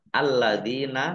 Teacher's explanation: Lam fathah berdiri mat tobi'i, panjang 2 harokat. Alladzina, lamnya dibaca double, ada tasdidnya.